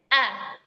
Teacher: Nah, pangkalnya ini datar gitu enggak enggak naik ya, pangkalnya datar. Jadi ketika kita lafazkan huruf Hamzah A dia lidahnya datar aja gitu. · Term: istifal